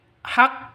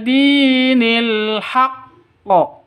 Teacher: Itu bukan ini huruf qof bukan huruf kef ya. Huruf qof harus dipantulkan ke huruf qof-nya.